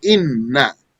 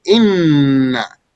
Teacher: So inna. Those two noons merge and become one doubled letter, inna. And the tongue will move one motion for both of them.